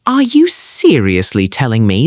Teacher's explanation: Emphasizing seriously perfectly conveys that distinct blend of disbelief and frustration so commonly heard in daily conversational sentences in the USA during stressful situations.